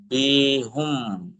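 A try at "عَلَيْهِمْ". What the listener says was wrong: হুম না তো, হা মিমজের কি হয়? হা মিম পেশ কি হয় তাহলে? জি, হা মিমজের হিম।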